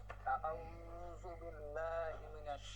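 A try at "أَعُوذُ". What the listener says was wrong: এখানে প্রথমে ভুল, আউযু হবে না, কি হবে? আউযু, জাল, আউযু, জাল নরম করে হবে। আউ না, আইনে বলি না, আইনটা ঠিক ছিল, জালটা ঠিক নাই, জু বলছেন, জু। আউযু আউযু আউযু বিল্লাহি মিনাশ শাইতানির রাজীম।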